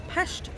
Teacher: in hungary a single s is an sh sound